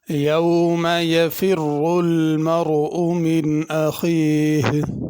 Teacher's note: یفر یہ را پر پڑھی جائے گی، المرء کی را بھی پر پڑھی جائے گی۔ اخیہ آخر میں ہا ظاہر کرنی ہے، اخی نہیں پڑھنا۔